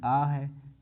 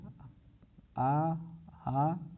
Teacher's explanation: आ हा और विसर्ग ये कंठ ध्वनि होते हैं